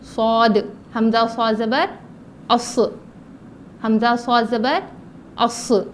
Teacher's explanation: اس کے بعد ہے صاد, جس کو سوات اور زوات کہتے ہیں, جو پڑھنے کا غلط طریقہ ہے صاد زوت. تو یہ صاد جو ہے زبان کی نوک نیچے کے دانتوں کے کناروں سے ملا کر موٹا پڑھیں گے